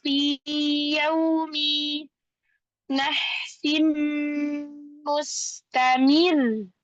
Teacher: Nahsin ada tanwin bertemu dengan huruf mim, idgham bi gunnah ditahan yang lama.